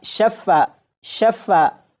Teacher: فا کی آواز 2 مرتبہ آ رہی ہے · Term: تشدید